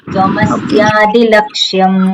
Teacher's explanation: એ દંત્ય સકાર છે જ્યારે પણ સકાર બોલીએ ત્યારે જીભ દાંતને અડે